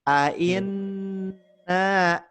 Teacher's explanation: na-nya diayunkan 2 harakat karena ada tanda panjangnya